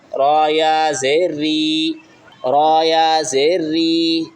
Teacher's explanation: را کے نیچے زیر آ جائے تو را باریک پڑھی جاتی ہے